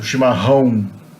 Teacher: the double R is pronounced like an H. And the A with the tilde followed by the O is pronounced on.